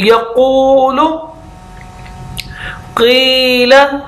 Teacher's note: काफ जिसकी प्रैक्टिस कर रहे हैं मोटा, तो जुबान की जो जड़ है वो तालू वाली तरफ लगेगी, लेकिन किस तरफ से करके, ये जो कवा है जो लटका हुआ होता है जिसको यहूला कहते हैं, इसके और तालू के दरमियान वाला जो हिस्सा होता है उस तरफ को जाके लगेगी।